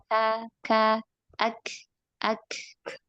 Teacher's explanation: Adapun Kaf itu harus diikuti dengan hams · jadi ditempel dengan sempurna dulu baru kemudian hamsnya menyusul tapi itu dengan secara cepat ya bukan bukan Apa durasinya e berjauhan gitu Cepat Ka Ka